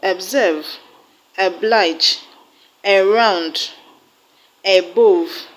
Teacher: All these words are 2 syllabic words, but because the first syllables contain the short sound, they are not stressed on the first syllable. The short sound is pronounced eh, eh, eh.